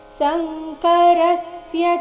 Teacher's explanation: ಶಂಕರಸ್ಯ ರ ಮೇಲೆ ಆಘಾತ